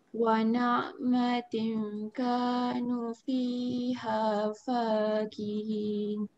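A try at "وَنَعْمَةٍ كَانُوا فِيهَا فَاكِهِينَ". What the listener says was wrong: Okey, bagus bacaan. Okey, cumanya boleh berhati-hati untuk panjang dan pendek lah.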